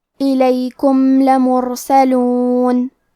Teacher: لام حروف الاظہار الشفوی میں سے ہے تو ہم میم کو ظاہر کریں گے اور بغیر غنہ سے یہ حکم کو ادا کریں گے